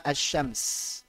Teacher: disebut sebagai syamsiyah kalau cara bacanya sebagai kata asy-syams, yaitu melebur, bertasydid.